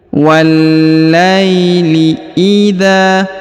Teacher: huruf wa langsung disambung masuk ke huruf lam yang berharakat tasdid ya kemudian huruf la diayun sekali karena di depannya terdapat Ya · huruf za dipanjangkan 2 harokat karena di depannya terdapat alif.